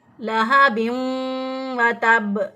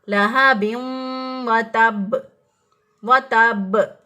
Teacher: लहा बिम जब किया तो नाक में आवाज़ चली गई, और बा जो है वो वाव के साथ शामिल होकर उसने फिर अदायगी उसकी हुई, लहा बिम व तब, व तब। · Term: गुन्ना